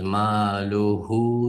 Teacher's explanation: Keyingisi hu harfi vav bilan, ya'ni azroq suzib o'qiymiz.